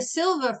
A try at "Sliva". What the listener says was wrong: It's Sliva. It's Polish. If the I was first, it would make me Hispanic, and I am not.